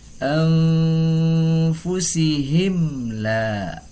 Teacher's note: Dalam ilmu tajwid ini disebut dengan izhar syafawi. Jadi harus dibaca dengan izhar, dibaca dengan jelas. Jelas huruf mim sukunnya dan jelas huruf lamnya.